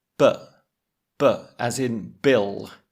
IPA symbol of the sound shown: b